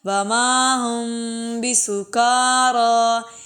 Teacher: یہ لمبا اس لیے کر رہے ہیں کاف اور را کو کھڑا زبر کی وجہ سے